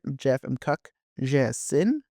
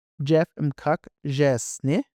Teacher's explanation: Single I is a short vowel sound. So we're going to de-stress that short I, bring in the N sound, and then add our fourth person suffix.